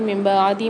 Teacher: نون ساکن کے بعد اقلاب والا قاعدہ ہو رہا ہے، چھوٹی سی میم سے بدل کر نون کو غنے کے ساتھ پڑھیں گے